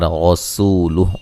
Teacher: غسول را کو موٹا سین کو باریک سیٹی سے، اور یہ واو مدہ ہے، وقفاً ہا کو ساکن کر دیں گے.